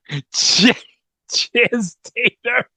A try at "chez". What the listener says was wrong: It's Shea tater. Yeah, the Z is silent and the E is it sort of has an implied accent aigu there.